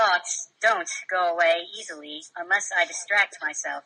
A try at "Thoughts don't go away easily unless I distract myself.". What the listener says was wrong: Much better.